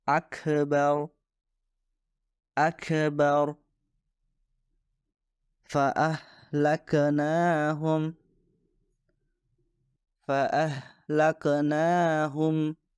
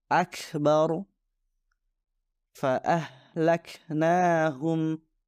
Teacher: Tidak boleh ada qalqalah, namun harus diucapkan dengan hamas